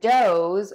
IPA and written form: doʊz (does)